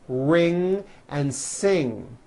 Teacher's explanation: comes out of your nose it's a combination of an N and a G and it is found at the ends of words like ring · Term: ng sound